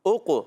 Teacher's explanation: قاف قلقلہ والا ہے، قلقلہ بھی کریں گے، آواز لوٹ کر آئے گی۔